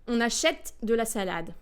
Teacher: in French you'd produce all the vowels sort of an equally length. They would be of equal lengths, but all the vowels will be produced fully.